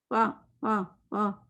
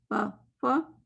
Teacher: فا میں اس میں ایک ہوا کی آواز ہوتی ہے جس کو ہمز کہتے ہیں, اس کے بغیر یہ لفظ کلیئر ہوتا ہی نہیں ہے.